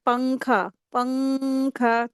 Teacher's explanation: اخفا کے معنی ہوتا ہے چھپانا، یعنی تنوین یا نون ساکن کے بعد حروف اخفا میں سے کوئی بھی ایک لیٹر آ جائے تو نون کی آواز کو ناک میں چھپا کر کے غنہ کر کے پڑھیں گے، اس کو اخفا کہتے ہیں۔